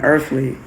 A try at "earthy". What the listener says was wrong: It's earthy, not earthly.